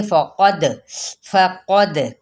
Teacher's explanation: قاف پر اور دال پہ کلکلا